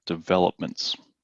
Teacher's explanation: the stress is on the second syllable here, developments